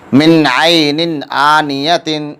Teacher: نون ساکن کا اظہار ہو رہا ہے کیونکہ نون ساکن کے بعد حروف اظہار یا حروف حلقی میں سے عین ہے، اس لیے نون ساکن کا اظہار ہوگا۔ اظہار میں نون ساکن کو ظاہر کر کے بلا غنہ کے جلد پڑھیں گے۔